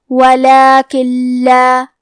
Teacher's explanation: لام حروف الادغام بغیر غنہ میں سے ہے تو ہم یہ حکم کو بغیر غنہ سے لیکن تشدید کے ساتھ ادا کریں گے